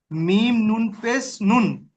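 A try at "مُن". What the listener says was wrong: মিম নুন পেশ মুন পড়েছেন, পড়েন তারপর। নুন নয়, ও ভাইজান, মিম নুন পেশ মুন নয়, এই নুন নয়, মিম নুন পেশ মুন, মুন, মুন, মু, মু।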